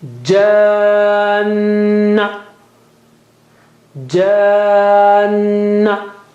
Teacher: noon has also to be stretched twice with gunna